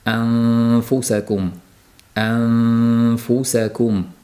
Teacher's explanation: U to'g'ri qoidaga muvofiq chiqishligi uchun an a'an keyin og'zimiz ya'ni labimiz to'g'ridan-to'g'ri thfu an. Ayni paytda dimog'imizdan ikki harakat miqdorida taxminan g'unali tovish kelib turishligi shart. Anfusakum, anfusakum mana shunday talaffuz qilinadi. · g'unnalik sifati qoladi, lekin tilning qismi yo'q bo'lib ketadi. To'g'ridan-to'g'ri bevosita fga o'tib ketilinadi.